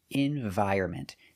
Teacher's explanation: So remember, pronunciation, environment. The N is silent.